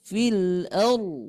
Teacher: roknya tafkhim, tebal ya Bu